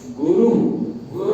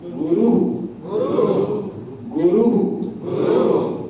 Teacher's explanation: वो मुंह जो है ऊ की तरह ही खुला रह जाएगा बोलने के बाद